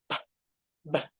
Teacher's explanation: contact of the lower and upper lips